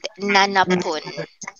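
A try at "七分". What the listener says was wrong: No, but we don't say nana pun. Nana fun. nana So fun is basically fun. Basically, fun, minute, fun, fun. Ichi fun, ippun. San fun, sanpun. Yon fun, yonpun. So basically, fun.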